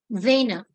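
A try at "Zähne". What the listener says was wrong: Sorry, Sena, not Zena. Sena.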